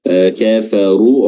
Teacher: Kafaru, ra-nya di sini tebal, ya, karena berharakat dhamma.